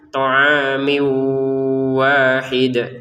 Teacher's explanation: Mimnya harakatnya kasratain kita masukin ke wau sehingga yang tulisannya thaa min ya.